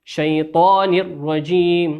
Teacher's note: تنوين أتى بعده حرف الراء والراء من حروف الإدغام بغير غنة ولا يغن